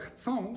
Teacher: they're analyzed as diphthongs, or sequences of two vowel sounds, where the first vowel sound isn't nasal, but the second one is. So in a word like chcą, for example, it's not chcą, it's chcą. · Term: nasal vowels